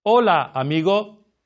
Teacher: The difference is the shortening of the vowel sounds and not closing off the vowel sounds at the end.